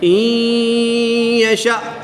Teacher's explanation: نون ساکن کے بعد یہاں پر یا حروف یرملون میں سے ہے تو یہاں پر ادغام مع الغنہ ہوگا، یعنی غنہ کر کے پڑھیں گے